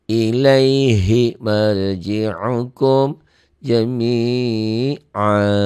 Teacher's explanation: A-nya jadi 2 ya. Jami'a maksudnya jadi panjang. Panjangnya 2 harkat, 2 ketukan. Ya, 1 alif.